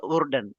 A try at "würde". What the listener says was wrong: Nein. Umlaut. Würde.